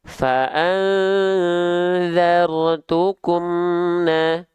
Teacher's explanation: Emnya terus mengalir sedikit. Gak boleh putus. Karena kalau putus suara, nama sifatnya itu syiddah. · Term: tawassutu